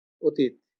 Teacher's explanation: একটা স্বরেও হয়ে গেছে ও, তাই না, আর দীর্ঘ ইকারটা হয়ে গেছে হ্রস্ব ইকার। একটু মনে রাখতে হবে, অধীন দীর্ঘ ইকার হ্রস্ব ইকার হয়ে যাবে অধীন।